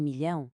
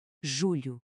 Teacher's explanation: Já em julho, o LH é um som lateral. A ponta da língua toca nos dentes da frente e o ar escapa pelos lados.